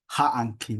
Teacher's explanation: It's hanki or ha'anki with that glottal stop.